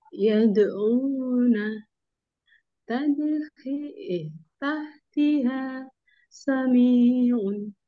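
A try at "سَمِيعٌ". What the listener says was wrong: Sami'un. Jangan terlalu panjang.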